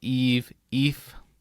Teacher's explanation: a long E plus a V sound, long E plus F sound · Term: diphthong